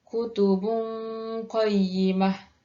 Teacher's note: tanwin bertemu dengan qaf, bacaannya adalah dengan dengung 2 harakat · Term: ikhfa hakiki